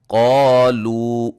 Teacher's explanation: لو کو پھر ایک الف کے برابر ہی پڑھیں گے